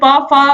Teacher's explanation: पा और फा आ गया है, इसका उच्चारण स्थान ओष्ठ है